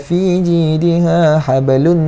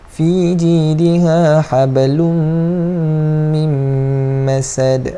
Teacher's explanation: Hablum ni, lum ni masukkan terus ke dalam huruf mim. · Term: idgham ma'al gunnah